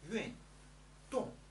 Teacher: Both are fourth tone